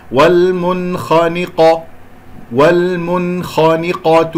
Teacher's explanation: الخاء مفخمة والقاف مفخمة، مرتبتهما الثانية مفتوحة